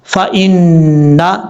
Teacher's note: یہاں پر نون کے اوپر شد غنہ کریں گے ایک الف کی مقدار